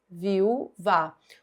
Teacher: O U é tônico, é forte, é a sílaba mais forte. Então, a letra U tônica, quando forma hiato com a vogal da sílaba anterior, lembrando que hiatos são duas vogais, uma do lado da outra, em sílabas diferentes. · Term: U tônico